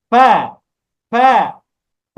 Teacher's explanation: ফা উচ্চারণ করার সময় উপরের দুইটা দাঁত লাগবে নিচের দুইটা পেটের সাথে